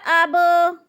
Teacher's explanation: با پہ قلقلہ ہو رہا ہے، با کو ہلا کر پڑھنا ہے اور اپنے سے پہلے لفظ کے ساتھ ملا کر پڑھنا ہے۔